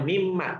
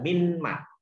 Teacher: nun matinya hilang. Hilang. Jadi masuk ke dalam huruf mim. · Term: Idgham biguna